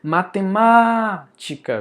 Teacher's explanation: A sílaba mais forte é o má. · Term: sílaba tônica